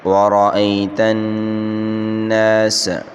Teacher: نون مشدد ہے، اس کو 1 الف اس میں غنہ کریں گے، اور اس کے بعد الف مدہ، اس کو 1 الف کی مقدار کھینچ کر پڑھیں گے، باقی کسی حرکت کو نہیں کھینچنا۔